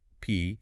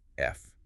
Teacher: This one drills the P's and F's, forcing you to switch between a sound made with just your lips, P, and a sound made with your lips and teeth, F